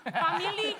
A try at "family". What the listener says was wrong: Oh, jangan lama belakangnya, family.